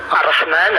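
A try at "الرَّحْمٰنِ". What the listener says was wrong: Ar-Rahmani, encore une fois la kasra elle est où?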